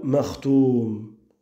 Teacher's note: al-madd al-'arid lis-sukun pour ta parole makhtoum. Une prolongation que tu pourras lire en deux temps, en quatre temps, ou en six temps